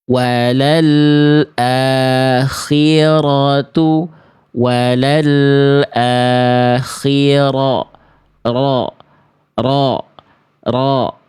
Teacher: Dia bergetar ya, tapi getarannya tidak boleh terlampau berlebihan, tapi juga bukan berarti hilang takrirnya, hilang getarannya ya.